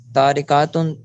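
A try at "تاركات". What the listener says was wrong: تاریکاتن لمبا نہیں کریں گے. تاریکاتن.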